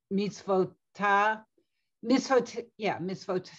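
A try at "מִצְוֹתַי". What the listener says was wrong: tie. The yud, it makes it I.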